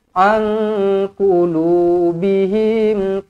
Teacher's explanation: Nun kosong bertemu dengan qaf, ikhfa hakiki, dengungkan 2 harakat.